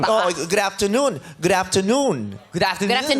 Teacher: Ganun, kailangan tamang intonation. Sa noon aangat.